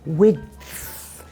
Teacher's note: with the /d/ sound you have to stop the airflow, 'wid' but then you have to start it again to make the ‘th’ sound